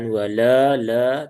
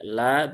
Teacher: la biasa tipis walaupun memang masih ada yang dibaca dengan tebal menjadi wala tapi itu kurang sesuai ya lam lamnya di sini ada alif ya alif setelah fathah maka lamnya ee terbaca dua harakat cukup dua harakat ee jangan panjang-panjang.